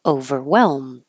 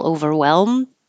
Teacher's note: And instead of releasing the D, overwhelmed, just hold it in the L, D position.